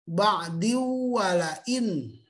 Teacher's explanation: Jadi ada tanwin menghadapi wawu, maka luluh menjadi suara wawu yang lebih terdengar.